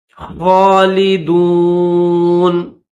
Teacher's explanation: stop کریں گے تو یہ نون کے اوپر جو زبر ہے اس زبر کو نہیں پڑھیں گے، اس کو جزم کے ساتھ پڑھیں گے